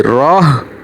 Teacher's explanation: उल्टा पेश नहीं पढ़ेंगे बल्कि हा को साकन पढ़ेंगे, तो रा हा से मिल जाएगी, रौह, इस तरह से बन जाएगा।